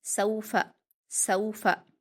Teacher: सीन पर वावलीन है, इसको हम मारूफ आवाज़ के साथ जल्दी पढ़ेंगे और बारीक पढ़ेंगे। फ़ा पर हरकतें जल्दी पढ़ेंगे, सौफ़ा, सौफ़ा।